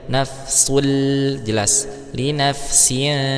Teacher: ada dhamatain bertemu dengan huruf lam, maka hukumnya idgham bila gunnah, tidak didengungkan ya